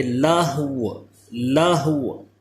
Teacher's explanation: واو ساکن ہو جائے گا، صرف ہا بھی ساکن، واو بھی ساکن، اور واو پہ ہونٹ گول کر دیں گے